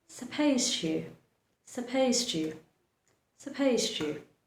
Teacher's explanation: the D at the end of the word supposed becomes silent and you move ahead pronouncing the letter T.